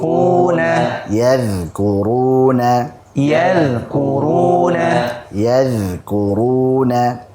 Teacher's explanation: yang mengalir adalah suaranya nafasnya tidak mengalir kemudian dia dibaca tipis